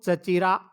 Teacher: चाचा में चा था, लेकिन चचेरा में वह चा च में परिवर्तित हो गया।